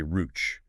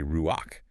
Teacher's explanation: you pronounce the vowel before the consonant